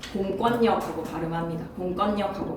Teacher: 리을리을이 아니라 뭐라고 발음한다? 니은니은으로 발음이 된다는 사실을 기억해 줬으면 좋겠어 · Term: 리을 비음화